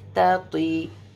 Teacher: دونوں کا مخرج ایک ہے, صرف تو کو تھوڑا راؤنڈ ماؤتھ کریں گے